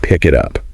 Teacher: The real key is there's no hard stop between those words, you see. It's just this continuous smooth flow. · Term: linking